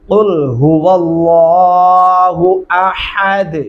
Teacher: अहद हा नहीं पढ़ना, बारीक हा पढ़ेंगे